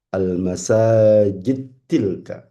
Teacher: Diidghamkan dal ketemu ta.